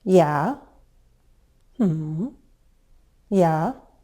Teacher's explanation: It's when our voice drops from a higher pitch to a low one and then rises a little, as in, yeah, yeah. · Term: fall-rise intonation pattern